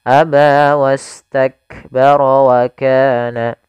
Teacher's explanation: sini ada sifat huruf Kaf memiliki sifat yaitu syiddah dan hamsnya syiddahnya harus tampakkan dulu baru hamsnya tidak bisa bersamaan